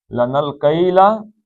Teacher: نون آگے لام میں چلا جائے گا